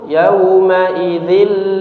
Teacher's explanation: Jangan kita baca yaumaid lilil mukad tidak ya tidak seperti itu. Tapi langsung dimasukkan ke huruf lamnya tanpa disertai dengung